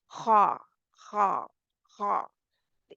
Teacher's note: आवाज थोड़ी सी जैसे रखड़ती हुई अदा हो रही है